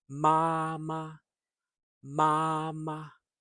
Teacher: First tone is the high note and it's steady, always the same height.